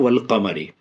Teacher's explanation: تو اب تمام ان حروفوں میں دیکھیے قمری میں کیا ہو رہا ہے، الف خالی ہے، الف خالی، الف خالی ہے، لام میں جزم ہے۔ تو اصلی جب الف خالی ہے تو نہیں پڑھ رہے، ڈائریکٹ لام سے ملا کے پڑھ رہے ہیں